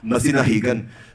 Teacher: notice that when I say kan with the K, it becomes sort of a G sound. That happens because the K and G are allophones.